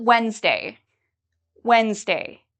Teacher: I do not pronounce the d